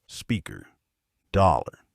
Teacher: in American English, speakers curl their tongue up and pull it back to make a strong sound at the end of these words